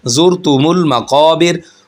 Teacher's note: क़ाफ मोटा पढ़ा जाएगा क्योंकि हरूफ मुस्तारिया में से है। वो हर्फ जो हमेशा मोटे पढ़े जाते हैं उन हरफों में से क़ाफ है।